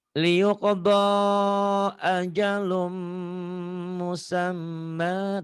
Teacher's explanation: Ini yang dikatakan idgham bigunah. Ada mim bertasjid jadi ada gunahnya.